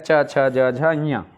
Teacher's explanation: च वर्ग स्पर्श संघर्षी वर्ग है